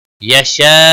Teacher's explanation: हुरूफ यरमलून का या आया है इदगाम बागुन्ना होगा यशा अल्लाह यशा बड़ी मद है मद मुत्सिल 5 अलिफ के बराबर खींच कर पढ़ेंगे